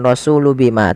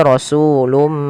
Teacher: Jadi sehingga ini bacanya bukan rasulu bima, tapi rasulum, mimnya dibaca. Asalnya rasulun bima karena bertemu dengan ba diganti seperti ini penulisannya. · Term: iqlab